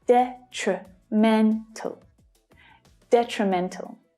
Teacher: the first syllable also has a secondary stress. So we can hear that one clearly as well, which means that the other 2 reduce